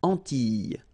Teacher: So here it's quite interesting because, well, you've got this E and then double L, E, S, okay, so final S and E, really you don't pronounce them, so you get this I sound